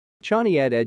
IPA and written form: ˈtʃeɪni (Chani)